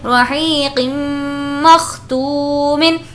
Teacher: حروف یرملون میں سے میم ہے تنوین کے بعد، اسی لیے یہاں پر غنہ کر کے پڑھیں گے